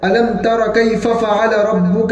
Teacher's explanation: اس سورت کے اندر سب سے پہلے ألم تر، تو تا باریک حرف ہے، را پور حرف ہے، تو گویا کہ را جو ہے وہ باریک حرف کو پور کرنے کی کوشش کرتا ہے، تو ہمیں اکثر اس کا خیال رکھنا ہوتا ہے کیونکہ وہ ترا کی جگہ پر تورا ہو جاتا ہے، علم تورا، اس طریقے سے۔